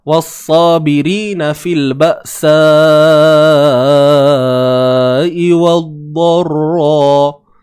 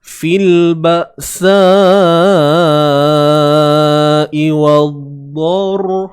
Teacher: Mad wajib muttasil. Hukumnya lah panjangnya 4 atau 5 harakat.